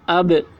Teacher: اب یہاں پر دیکھیے با یہ حروف قلقلہ میں سے ہے اور با کے اوپر جزم ہے تو اس میں قلقلہ ہوگا۔ جیسے اب، یہ آواز با کی آواز جو ہے با میں آواز ٹکرا رہی ہے، اسی کو قلقلہ بولتے ہیں۔